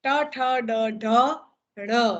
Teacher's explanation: જીભનો આગળનો ભાગ ઉચકાય અને દાંતની ઉપર, પેઢા અને એની ઉપર જે મૂર્ધા છે ત્યાં જઈને સ્પર્શે અને ધ્વનિ પેદા કરે, તેને મૂર્ધન્ય વ્યંજન તરીકે ઓળખાય છે.